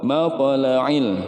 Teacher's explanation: Nah, ini pokoknya to sukun, ini dibacanya qalqalah, qalqalah sugro, dia memantul ya, ada pantulan.